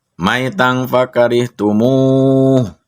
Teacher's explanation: Nah, di situ ada tanwin fathah bertemu dengan fa. Tanwin fathah bertemu dengan fa, maka diberi hukum bacaannya yaitu dibaca ikhfa.